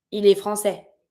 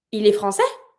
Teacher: And if you want to say it orally, you just raise your voice at the end.